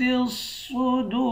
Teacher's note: دال کو واو کے ساتھ ملا کر ایک الف کی مقدار کھینچ کر پڑھیں گے، آخر میں را ساکن ہے۔